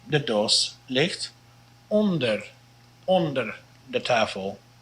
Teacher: This is a short O here. It sounds almost like a long O, but it's really not.